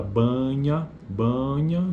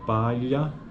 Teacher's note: o articulador passivo é a parte final do palato duro